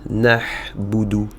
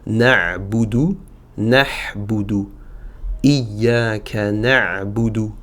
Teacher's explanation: Pour la lettre ayn, c'est ici la vibration des cordes vocales qui va se faire ressentir